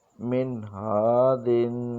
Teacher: نون ساکن کے بعد حروف حلقی آیا ہے، اس لیے غنہ نہیں ہوا بلکہ اظہار ہوا ہے